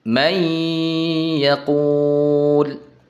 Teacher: Definisi lengkapnya yaitu apabila nun sukun atau tanwin bertemu dengan huruf-huruf idgham. Maka nunnya dileburkan ke huruf sesudahnya dan dibaca dengan dengung · Bunyi nunnya tidak terdengar lagi. Yang terdengar hanyalah huruf berikutnya. Dileburkan ke huruf berikutnya. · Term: idgham bighunah, idgham bi gunnah